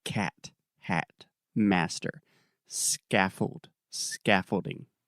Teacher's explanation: Yes, the stress is on the first syllable, and that first vowel sound is the ah, very open ah, like cat, hat, master, scaffold, scaffolding.